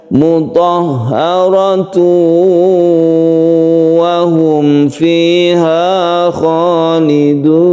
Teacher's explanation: tanwin bertemu dengan waw ini kita sebut dengan idgham bil gunnah. Kita panjangkan.